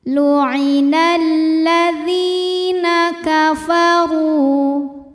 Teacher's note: Dzi hukumnya adalah mad tabi'i zahiri, sebab ada ya sukun sebelumnya berharokat kasroh. Maka huruf dzal panjang dua harokat.